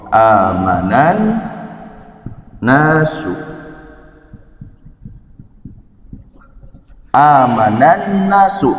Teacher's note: lam takrif dimasukkan kepada huruf nun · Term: idgham syamsiah